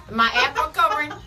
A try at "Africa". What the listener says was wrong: You make it have 4 syllables.